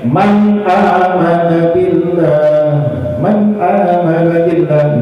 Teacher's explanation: nun mati dan tanwin ketemu huruf izhar. Tidak boleh dengung. Misalnya man amana billah, salah. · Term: izhar khalqi